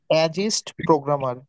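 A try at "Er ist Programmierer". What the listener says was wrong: এটা হবে কি? অ্যাজ না, এটা হবে এআর। এই এআরটাকে, এই যে এআর, অ্যাস হবে না, এয়া হবে। এখানে এয়া হবে।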